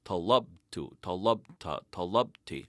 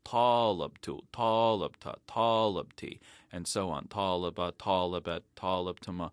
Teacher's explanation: putting the accent on the first syllable instead of the second when you conjugate Form 3 verbs